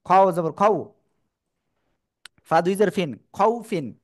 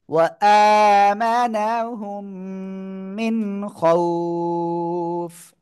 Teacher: নুন সেকেন্ডের পরে ইজহারের অক্ষর খ স্পষ্ট করে পড়তে হবে।